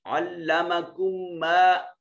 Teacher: یہاں دو میم ساکن کے بعد میم متحرک آ گیا، تو یہاں ادغام شفوی ہوگا